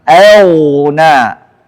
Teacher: Kemudian auna, ghain sebelumnya hamzah, harus jelas hamzahnya dibaca tipis, ghainnya tafkhim, tebal.